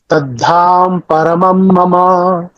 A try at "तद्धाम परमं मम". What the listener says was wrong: तद्धाम, म का उच्चारण पूरा होना चाहिए। ये जो उच्चारण तद्धाम परमं मम,